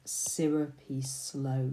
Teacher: you have that sibilance there, that repetition of the S sound